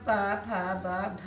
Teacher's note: ये सारी ध्वनि हमारी ओष्ठ होती है, यानी ओष्ठ से टक्कर मार के ध्वनि निकलती है। तो ये हो गया हमारा स्पर्श व्यंजन।